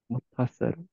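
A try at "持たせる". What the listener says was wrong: Hai, motaseru. Perfect.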